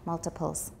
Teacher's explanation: There's a consonant before the T, so it's not a tap